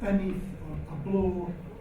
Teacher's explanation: lots of words that begin with b, as in beneath, or below, drop that in Scots.